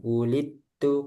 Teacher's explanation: dal jangan dipantulkan wulittu karena hukumnya di sini idgham